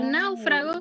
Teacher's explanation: abierta ya digo náufrago fíjate que la hay la del diptongo es una unión de vocales que forman una sola sílaba por tanto sonoramente se sienten muy unidas